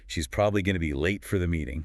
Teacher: Okay, stress words there. Probably late, meeting, that's the core info